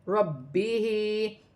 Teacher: با مشدد ہے، ربی جماؤ کے ساتھ پڑھا جائے گا